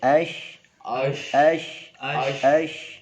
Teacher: Shin itu tepatnya di tengah-tengah lidah.